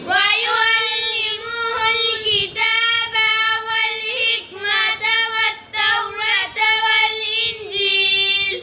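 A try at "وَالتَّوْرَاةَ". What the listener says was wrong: वत्तौरात, रा को खींच के पढ़ेंगे।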